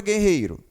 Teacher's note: a letra U não é sonoro aqui